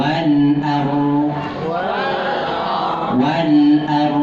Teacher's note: lam sukun ro sukun sama-sama dialirkan W wal wal wal Nah lamnya kan ngalir tuh Wal a